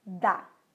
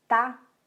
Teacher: Um pouquinho aqui atrás dos dentes. Só que no d, as minhas cordas vocais vibram. E no t, elas não vibram.